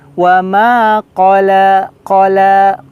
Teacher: panjang harokat dari ma di sini mad tabi'i, dua ketukan atau dua harokat ya. Wa ma qala, qala, qaf, huruf qaf terasa.